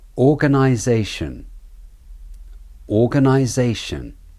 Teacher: You can hear the vowels clearly. The zay is the main stressed syllable. The gun and shun syllables are the de-stressed syllables.